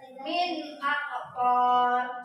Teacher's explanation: Ini hurufnya huruf alif. Nun mati bertemu huruf alif. Hukumnya izhar. Dalam membacanya jelas.